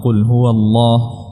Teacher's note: Allah di sini tebalkan karena sebelumnya huruf yang berharakat fathah